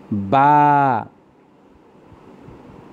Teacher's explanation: 2 ঠোঁটের ভিজা অংশ থেকে বা উচ্চারিত হয়।